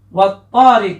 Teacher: huruf alif lamnya pada kata at-thariq ini tidak dibaca jelas tetapi dilebur ya.